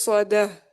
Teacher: دال پہ 1 کاؤنٹ کی ہوگی. آگے تا مربوطہ جو ہے وہ ہا ساکن بن جائے گا